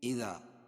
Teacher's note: اذا الف مدہ ہے، کیونکہ الف سے پہلے ذال کے اوپر زبر ہے، تو اس لیے الف مدہ ہوگا، اس کو ایک الف کے برابر کھینچ کے پڑھیں گے